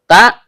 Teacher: Ta, ujung lidah bertemu dengan pangkal gigi seri atas.